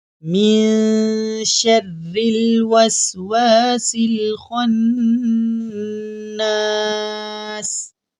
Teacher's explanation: خا حروف مستعلیہ میں سے ہے تو خا کو ہم موٹا یعنی منہ پر کر کے پڑھیں گے۔